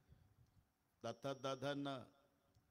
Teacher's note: जेव्हा जिभेचा संबंध दाताशी येतो ते दंते आहे